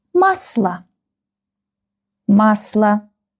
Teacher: You can see that stress is on the first syllable, on the A. So this letter O will be read and pronounced like A.